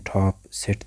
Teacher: These are produced by tongue tip to alveolar edge. These are our alveolars, such as in top, sit.